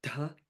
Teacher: Notice the D and H, as we've talked about in all the other Veda mantras. It's an aspirated sound. So it's dha as opposed to just da.